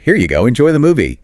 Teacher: Standard polite phrases, rising tone on movie.